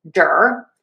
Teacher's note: Yes, I'm saying a d. This is a flap t that I like to teach as just a fast d sound.